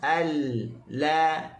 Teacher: Kita sebut lam pun kita hujung tepi lidah letak di gusi dalam keadaan yang tak kuat. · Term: bainiyah atau mutawassut